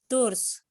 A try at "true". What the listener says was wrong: True. Ya, true bukan apa tadi kamu bacanya? Tour, kok tour. True ya bacanya ya. True.